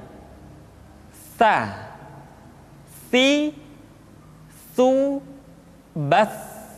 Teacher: tsa dikeluarkan dengan menyentuhkan ujung lidah kita dengan dinding dua gigi seri bagian atas diucapkan dengan suara dan nafas yang terdengar mengalir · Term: huruf tsa, huruf Sa